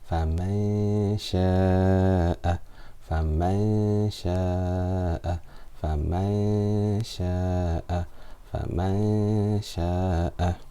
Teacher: I will pronounce the noon with the ghunna for 2 harakat, and I will put my mouth near the makhraj of the next letter, near the articulation point of the sheen. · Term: ikhfa